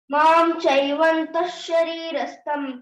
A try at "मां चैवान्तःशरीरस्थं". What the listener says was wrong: చైవంత అన్నట్టుగా వినిపించింది నాకు. అది మాం అని మకారం వినపడకూడదు అక్కడ. మాం చైవాంత శరీరస్థం, షాకు శావత్ ఇచ్చినట్టుగా కూడా రావాలి. మాంచైవాంతః శరీరస్థం తాన్ విద్యాసుర నిశ్చయాన్.